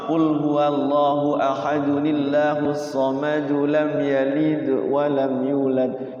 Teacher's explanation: Jadi tidak ada tuh yang qalqalah kubra mah. Kalau diwasal mah tidak terjadi qalqalah ya. Tapi kalau sughra dia harus qalqalah karena dia mati asli.